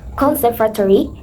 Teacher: Conservatory needs stress on the second syllable.